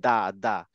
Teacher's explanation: যখন দা বলি তখন আমার দাঁতটার ঠিক গোড়ায় লাগে